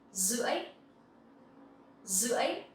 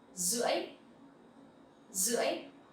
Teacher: Here, the R sound, you will pronounce like Z sound.